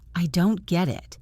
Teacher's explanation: The T in don't is often silent or stopped.